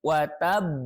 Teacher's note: Jadi ditekan dulu, watab. Baru pantulkan. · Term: qalqalah akbar